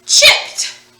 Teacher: it actually makes the t sound in this word so we don't hear the e but we know it's there because eb is our past tense